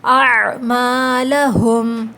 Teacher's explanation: اعمالہم، عین حلقیہ لیٹر ہے، حلق سے ادا ہوگا، میم کے بعد الف جو ہے وہ الف مدہ ہے، اس کو کھینچنا ہے، ٹھیک ہے، 2 کاؤنٹس۔